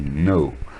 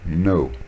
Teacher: Le verbe savoir, ça se dit know. Le K ne se prononce pas.